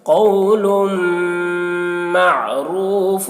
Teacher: قول معروف، یہاں پر تنوین کے بعد حروف ادغام میں سے واو ہے، تنوین کو واو سے ملا کر غنہ کے ساتھ پڑھیں گے، اس کو ادغام ناقص کہتے ہیں